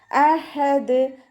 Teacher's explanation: ഹ തൊണ്ടയുടെ മധ്യഭാഗം വസത്തുൽ ഹൽക്ക് സൗണ്ടിനെ വ്യക്തമാക്കി കൊടുക്കുക. ദാല് കൽക്കലയുടെ ലെറ്റർ ആയതുകൊണ്ട് സുക്കൂനാവുമ്പോൾ ഫുൾ സുക്കൂന് കൊടുത്തിട്ട് ഉച്ചരിക്കാൻ ശ്രദ്ധിക്കുക.